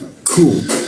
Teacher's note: Nah, ku posisinya di sikut tenggorokan ya. Siku tenggorokan itu ada hembusan napasnya. Ku seperti itu keluarnya.